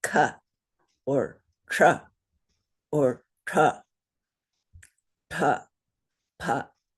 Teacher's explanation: there is no extra breath sound in those letters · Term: unaspirated